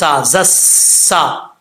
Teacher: سین سٹی کے ساتھ پڑھا جائے گا